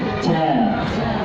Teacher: Tengah lidah bertemu dengan langit-langit bagian tengah lidah. Kalau kita membaca ja, itu tengah lidah masih maju sedikit. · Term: makhrajnya jim